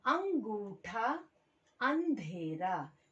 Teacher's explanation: अस्वर में जब हम इसका उच्चारण कर रहे हैं तो मुख से अधिक और नाक से कम आवाज निकल रही है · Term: अनुनासिक